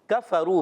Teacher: کاف کا مخرج زبان کی جڑ اور اوپر تالو کا سخت حصہ